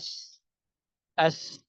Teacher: سین کو اگر ساکن حالت میں بھی ادا کریں گے، آواز تو آپ کی رک گئی ہے لیکن آپ کا سانس جاری ہے، جس سے آواز کے اندر ایک بتدریج پستی آتی ہے. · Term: سانس جاری رہتا ہے